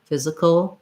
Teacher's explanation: we have our dark syllabic l at the end